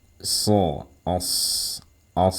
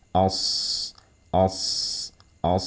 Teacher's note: karena huruf sod ini bersifat tebal atau bersifat isti'la yang dia harus dibaca tebal, otomatis suara desisnya pun akan terdengar tebal ya.